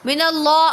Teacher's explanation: اللہ کے لام سے پہلے زبر ہے تو اللہ کے لام کو پر پڑھیں گے